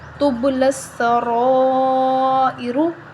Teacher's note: رو۔ را موٹی ہے تو ہم را کو موٹا پڑھیں گے، را کے اوپر زبر ہے اور الف کے اوپر مد ہے، بڑی مد ہے، 5 الف کے برابر اس کو بھی لمبا کریں گے